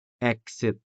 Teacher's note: the z sound is foreign to Hiligaynon, and so it is replaced by the native s sound. So exit would sound like exit in Hiligaynon.